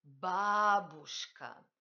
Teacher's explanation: Il n'y a pas de consonne palatalisée dans ce mot.